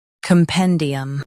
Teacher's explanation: Both US and UK have the same pronunciation of this word. Stress pen. Keep cum soft and D clear.